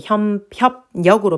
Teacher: 받침 비읍뒤에 연결되는 리을이 니은으로 발음됐어요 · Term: 비음화